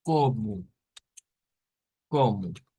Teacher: llevan o al final y la o se convierte en una u